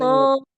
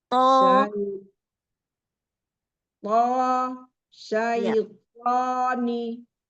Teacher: sentuhkan ujung lidah ke tempat tumbuhnya gigi seri, betul di situ kita tekan. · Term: huruf to